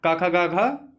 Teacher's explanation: का वर्ग जो होता है का खा गा घा, तो ये कंठ से बोला जाता है